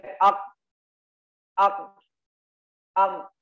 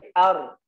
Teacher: huruf ra dalam keadaan sukun tidak dimatikan ak, tidak, tapi ar. Nah, dikasih getaran samar. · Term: tawassut